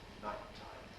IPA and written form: ˈnaɪt̚taɪm (nighttime)